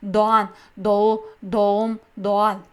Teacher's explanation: Qalin unlilar orasida G 60-70% talaffuz qilamiz, undan oldingi unlini ikkilantiramiz. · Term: yumshoq G